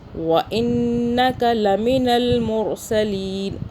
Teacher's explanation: را کو موٹا پر پڑھیں گے، کیونکہ را کے اوپر جزم ہے، چھوٹی سی دال ہے، پر پڑھیں گے، اور اس سے را سے پہلے پیش بھی ہے۔